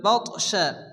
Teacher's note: তা সাকিন তা কলখানা অক্ষর হালকা ধাক্কা দিয়ে পড়তে হবে